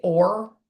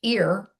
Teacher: if I say or, my lips are forward. But if I say ear, my lips aren't forward. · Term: vowel controlled R's